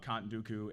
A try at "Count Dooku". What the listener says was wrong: You kind of shorten that word.